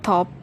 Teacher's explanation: with the puff of air which is called aspirated